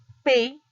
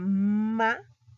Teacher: Ahí tengo la unión de mi labio superior conjuntamente con el labio inferior, al igual que la B, al igual que la MA, ¿no? Entonces, por eso se dice que son bilabiales, porque ambos labios tienen que juntarse